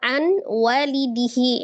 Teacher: nun sukun ketemu dengan waw, disitulah hukum idgham bi ghunnahnya